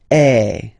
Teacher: if you combine this vowel A with the vowel I, okay, you will get the sound E. So really open E.